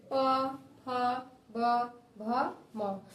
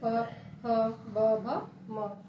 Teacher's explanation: इसको कहते हैं ओस्ट, ठीक है, क्योंकि ये हमारा ओस्ट से बोला जाता है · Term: पावर्ग